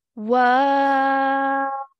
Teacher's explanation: So the wa sound is going to stretch for 4 counts. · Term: madde kabir